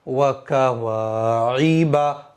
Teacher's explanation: عین زیر عی، وکا واعی، با زبر با، وکا واعی با، عین کو میں نے بالکل صاف پڑھا ہے، حمزہ میں نے ادا نہیں کیا ہے